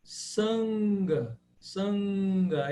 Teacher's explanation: E esse N com pontinho em cima, ele é o N nasal. É uma nasal gutural. Mas assim, você não precisa se preocupar muito, porque é como ele aparece quando ele se encontra com uma consoante gutural.